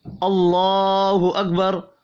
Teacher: اللہ کا نام زبر کی وجہ سے پر پڑھا جائے گا، اور را بھی پر پڑھیں گے زبر کی وجہ سے۔